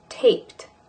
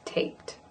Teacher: So there's an instance where the D at the end of taped sounds like a T